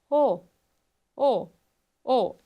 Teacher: O o o ela é uma vogal posterior. A língua vai estar mais posteriorizada, assim como na vogal U. · O nível de abertura dessa vogal já é meio fechada. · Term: Vogal o, Vogal O